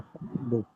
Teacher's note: یہاں پہ فا کے ساتھ ملا دیا تو حمزہ پڑھنے میں نہیں آئے گا بلکہ لکھنے میں باقی رہے گا. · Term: حمزہ وصل